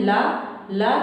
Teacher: दंत हो जाएगा, ला बोल रहे हैं, ला ला तो जीवा जाके दांत को छू रही है